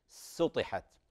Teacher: مجاورة السين للطاء، الطاء مفخمة وفيها إطباق